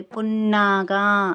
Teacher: పున్నాగా అన్నప్పుడు నా కింద నా వత్తు వచ్చింది కాబట్టి నొక్కి పలకాలి, పున్నాగా అనేసని.